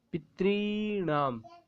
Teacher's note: षष्ठी बहुवचन का पितृणाम, जो री है वो दीर्घ री है, उसका हमें विशेष ध्यान रखना है।